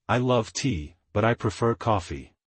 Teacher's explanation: rising falling intonation your voice Rises and then Falls used to show surprise contrast or when listing items